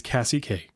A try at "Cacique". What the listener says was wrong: There's no There's no H to make Kashyyyk in that.